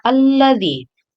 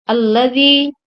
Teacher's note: Alladzi, dal bertemu ya, itu merupakan mad tabi'i. Cara membacanya dipanjangkan 2 harakat.